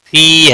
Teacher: کھینچ کر پڑھیں گے، نہ کو کھینچنا نہیں، فی ہے فی یا مدہ ہے ایک الف کے برابر کھینچ کر پڑھیں گے